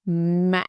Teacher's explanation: you go down, stop, and then goes up again. It's almost like two syllables. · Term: wavy tone